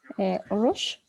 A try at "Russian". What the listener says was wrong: Russian with N at the end.